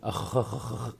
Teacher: لم أتكئ على مخرج الخاء لآتي بها بينية بشكل سليم، هذا وصف. مثلا قلت أخ، لم أتي برخاوة الخاء، لم أتي بزمن الرخاوة للخاء.